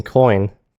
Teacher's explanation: Hopefully, you can appreciate how it's a combination of the o and e sounds. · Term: oi sound